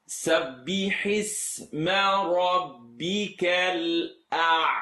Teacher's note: The ayn is not heavy, nor is the lam. If your mouth is shaped ah, then you're going to get the sound stuck behind your uvula, the little dangly thing.